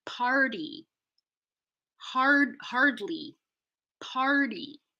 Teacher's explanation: party has a T in the spelling, but not in the pronunciation because we flap the T after an R